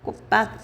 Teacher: 첫 번째 음절의 끝소리 규칙 사용돼서 디귿으로 바뀌었고 두 번째 된소리 대기가 됐단 말이야